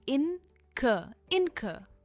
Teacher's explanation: We don't pronounce the R at the end.